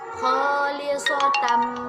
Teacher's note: kita baca dengan dimasukkan kepada huruf mim kemudian berdengung dan ditahan dua harokat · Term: Idgham Bighunnah